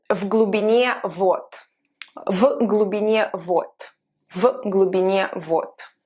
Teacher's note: D becomes reduced and it sounds like T.